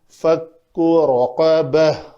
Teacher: با کے بعد ایک ہا کی ادائیگی جو اقصی حلق سے آئے گی وہ ہونی چاہیے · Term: ہائے ساکنہ